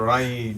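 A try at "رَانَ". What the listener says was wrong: Rain. Hold it in your nose. The noon, you should have a little bit of a noon. So not just rai, but rain. Rain.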